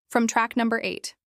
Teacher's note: Track rhymes with back, and stress is on num in number